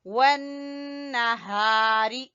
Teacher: نون مشدد کا غنہ کریں گے اور ہا کے ساتھ الف مدہ ہے